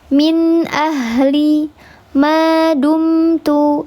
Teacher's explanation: ghunah yang kurang sempurna. Dua harakat saja ditahannya. · ada suara yang masuk ke hidung, maka ada ghunahnya, tapi tingkatannya yang kurang sempurna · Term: ghunah yang naqis, gunnah yang kurang sempurna